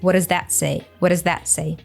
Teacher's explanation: T from what it actually morphs into the D sound